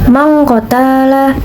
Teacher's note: Hukum tajwidnya yaitu ikfa karena terdapat nun mati bertemu dengan huruf qaf atau huruf ikfa. Dan bacanya berubah menjadi ong